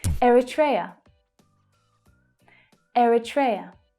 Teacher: So the third syllable is the stressed one and the others reduce down.